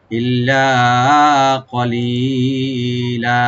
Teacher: ইল্লা কলিলা, কফ, কফটাকে ডিপ করে লি একালে টানবেন আর লামে, লাস্টে লামে যে দুই জবর আছে এখানে আমরা থেমে একালে পরিমাণ টেনে থেমে যাব, ওয়াকফ করবো, মধ্যে আওয়াজ হয়ে যাবে এখানে।